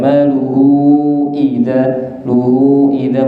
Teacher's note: biasanya habis mat panjang itu hamzahnya boten jelas. Makanya nanti pas baca idza hamzah dijelaskan